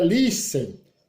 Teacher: Então, a mais forte é a penúltima